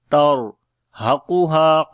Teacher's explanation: Ra we read in heavy sound, and also we make tawassut quality. tarhaquha. Qaf we read in heavy sound, ha we long due to alif madda.